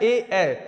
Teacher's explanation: दोनों कंठ और तालू को मिलाएंगे तो कंठ तालब तो ए ए को बोला जाता है कंठ तालव्य से